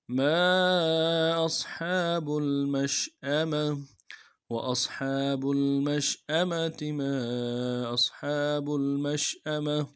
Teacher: ما حمزہ کو صاد کے ساتھ ملائیں گے، صاد کو موٹا کریں گے، سیٹی موٹی ہوگی۔